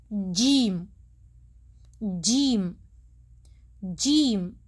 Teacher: زبان کا درمیانی حصہ تارک کو لگنے کے بعد آپ لفظ جیم ادا کر سکتے ہیں